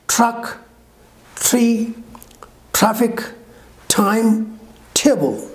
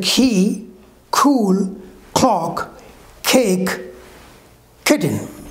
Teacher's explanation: these are aspirated with h with extra power extra force of air they are called aspirated sounds